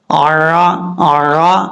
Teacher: عین کا مخرج جو ہے یہ گلے کے درمیان سے ادا ہوتا ہے